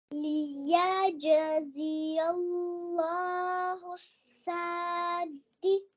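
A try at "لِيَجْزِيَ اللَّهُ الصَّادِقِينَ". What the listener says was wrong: सौद की आवाज को क्लियर करना है। लियजज़ी अल्लाहु सादिकीन।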